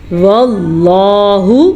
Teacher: لفظ اللہ کو پر پڑھنا ہے کیونکہ لفظ اللہ سے پیچھے زبر ہے